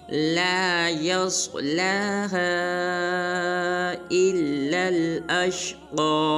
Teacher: सौद को पुर अदा करेंगे। सौद के बाद जो लाम है इसके ऊपर खड़ा ज़बर है, इसको एक मिक़दार लंबा करेंगे। उसके बाद जो हा है, हा के ऊपर मद है, हा को 3 मिक़दार लंबा करेंगे।